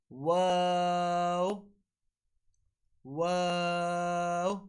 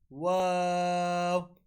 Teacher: and ba is from the wet portion of the lips while wow is pronounced with incomplete meeting and rolling the lips